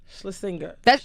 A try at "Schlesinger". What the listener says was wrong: Wrong inflection. Schlesinger.